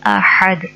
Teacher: احد کا ہا حلق کے درمیان سے ادا ہوتا ہے، حلق مڈل ایریے سے